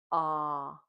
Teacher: When we make the sound ah, our mouth is open, our tongue stays at the bottom, and it's a voiced sound.